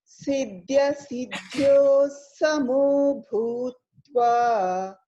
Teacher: BH comes as a Mahaprana with a lot of air out